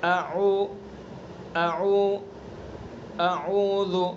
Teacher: حلق سے، حلق کا جو سینے کی طرف والا حصہ ہے وہاں سے حمزہ کو ادا کریں گے اور عین کو درمیان حلق سے ادا کریں گے، یعنی سینے کی طرف سے درمیان حصے میں آ جائیں گے.